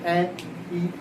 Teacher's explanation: स्वरों का उच्चारण करने में हमारे होठ गोलाकार नहीं बने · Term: अव्रतमुखी